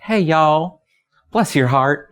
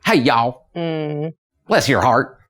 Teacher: the city accents are a little bit more soft they're softer a little more genteel and the rural accents are twangier · there's a drawl and an elongation and a slowness to a southern accent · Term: gentle southern accent